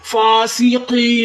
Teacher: یا مدہ ہو رہا ہے، یا ساکن اس سے پہلے زیر تو ایک الف کی مقدار کھینچ کر پڑھیں گے